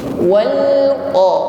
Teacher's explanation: mengucapkan lam berharakat sukun, ditekan membacanya. Wal qa, tidak boleh terlepas, nyeret atau memantul.